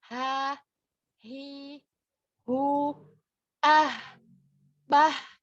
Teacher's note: H ini juga memiliki sifat hamas. Jadi nafasnya mengalir ya. · sekarang ha besar letaknya di tenggorokan bagian bawah